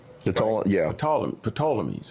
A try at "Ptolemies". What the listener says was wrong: Usually people say Ptolemies. They don't usually pronounce the P.